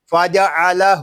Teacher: ہا الٹا پیش ہو، فاجعلہ. یہاں جو ہا ہے اس کو ہم ایک الف تک کھینچ کر پڑھیں گے کیونکہ کھڑی حرکات کو ایک الف تک کھینچ کر پڑھتے ہیں، باقی حروف کے اوپر حرکت ہے ان میں سے کسی بھی حرف کو ہم کھینچ کر نہیں پڑھیں گے.